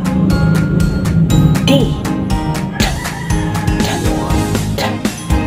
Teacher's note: ang paraan ng artikulasyon ay pasara at may tunog, at ang punto ng artikulasyon ay pangngipin